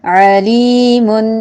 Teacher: لی علی لام ہر باریکی ہوگا، اللہ کے لام کے علاوہ ہر لام باریک ہوگا، چاہے زبر ہے، زیر ہے یا پیش ہے. علیم لی پہ یا مدہ ہو رہا ہے، اسے ایک الف کے برابر لازمی لمبا کریں گے. تنوین ہے تو میم منون ہوا.